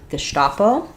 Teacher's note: The stress is on the sta syllable, and letter S says the SH sound in German.